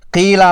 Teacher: مشاہدہ میں آیا ہے کسی لفظ میں سے مستعلیہ حرف کو موٹا پڑھتے پڑھتے ساتھ کے باریک حرف کو بھی موٹا کر کے پڑھنا جو کہ غلطی ہے۔ جیسے قیلہ میں قاف مستعلیہ حرف موٹا اور پر پڑھنا ہے لیکن ساتھ والی یا ساکنہ باریک پڑھنی چاہیے۔ حرف قاف کو اگر موٹا نہ ادا کیا جائے تو وہ کاف کی آواز دیتا ہے جس کا شمار بڑی غلطیوں میں ہوتا ہے۔